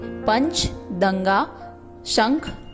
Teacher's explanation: अनुस्वार के उच्चारण में सांस केवल नाक से निकलती है